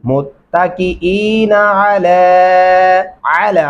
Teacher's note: आइन गले से अदा करेंगे